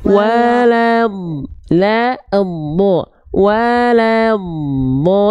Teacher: La, tapi la. Lamnya tipis dulu baru dodnya tebal.